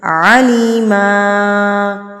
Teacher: آپ نے 2 زبر کو 1 زبر بنا دینا اور اس کو لمبا کر کے پڑھنا ہے، یعنی کہ الف لگا دینا ہے اور لمبا کر کے پڑھنا ہے.